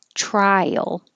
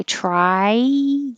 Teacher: because your tongue is going up really high, trial, it kind of slides down and makes a Y.